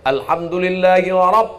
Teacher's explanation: ra-nya tebal. Bukan ra, tafkhim, tebal.